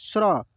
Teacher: यह तालव्य श और र के मिलने से बना है